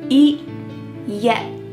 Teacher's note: My tongue is stopped at the top of my mouth and I'm not letting that air pass through.